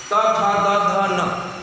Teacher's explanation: इन वर्णों का उच्चारण करने के लिए जिह्वा दांत के पास पहुंचती है। जिह्वा को दांत रोकता है, दांत के पास जाके जिह्वा स्पर्श करती है, उसी से टकराती है।